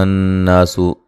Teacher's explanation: یا پہ جو مد ہے یہ مد جائز ہے، یا الگ تھا، ایہا الگ تھا، ٹھیک ہے۔ ایہا الناس نون مشدد پہ غنہ ضروری ہے اور یہ الف مدہ ہے۔